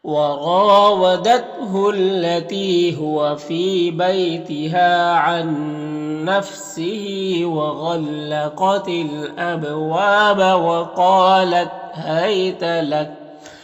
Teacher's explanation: وقف کریں گے تو کاف کا زبر سکون سے بدل جائے گا